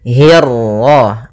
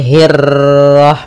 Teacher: untuk huruf ra ketika dia berharakat tasydid itu atau dia berharakat sukun, dia ra-nya 1 kali takrirnya. Tidak boleh banyak-banyak, tidak boleh hirrah. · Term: ra tafkhim